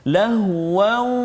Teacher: tanwin bertemu dengan waw. Jadi bunyi tanwin tu masuk dalam waw. Lahu berserta dengan dengung, dua harakat. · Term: idgham bi gunnah